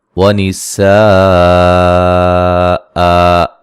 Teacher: جب وقف کریں گے تو دو زبروں کو الف مدہ میں تبدیل کر دیں گے